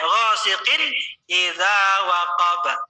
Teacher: Jadi enggak boleh didengungin, enggak boleh dipanjangin. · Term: izhar